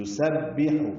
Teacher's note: سین صفیر کی آواز سے ادا کرتے ہوئے با سے ملائیں گے، با کو معروف پڑھیں گے.